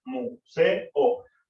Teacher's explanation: Museo no genera diptongo porque tenemos la E y la O, es decir, dos vocales fuertes juntas. Por lo tanto, la forma de separar museo en sílabas sería museo, 3 sílabas. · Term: hiato simple